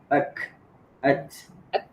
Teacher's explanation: pada huruf kaf dan ta yang mana setelah suara terputus keluar hembusan udara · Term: huruf hams